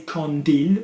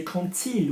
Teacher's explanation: we say quand il with a T